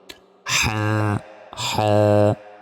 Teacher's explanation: উচ্চারণ করি এই হা অক্ষরটি গলায় চাপ দিয়ে উচ্চারণ করতে হবে হলকের অর্থাৎ গলার মধ্যভাগ হতেই হা অক্ষরটি উচ্চারণ করতে হয়